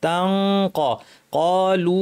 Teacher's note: জিব্বা কফের মাখরাজে লাগিয়ে নাক থেকে গুন্না করে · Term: ইখফা